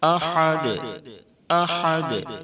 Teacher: دال ساکن ہو جائے گی، اس لیے دال میں قلقلہ ہوگا، کیونکہ دال حروف قلقلہ کے 5 حرفوں میں سے ہے۔